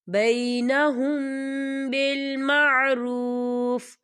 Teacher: یا دیکھیں آپ کو چھوٹی سی توئی نظر آ رہی ہے، تو یہ وقف مطلق کی علامت ہے، تو یہاں پر ٹھہرنا بہتر ہے. وقف کی صورت میں فا جو ہے وہ ساکن ہو جائے گا